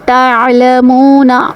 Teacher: عین کی ادائیگی وسط حلق سے ہوگی